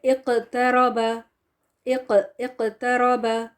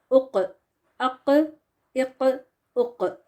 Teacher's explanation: تو جب بھی یہ قاف ساکن ہو کے آتا ہے when قاف is ساکن the مخرج is cut off by bouncing the sound and this bouncing is called قلقلہ